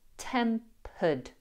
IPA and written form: ˈtempəd (temperED)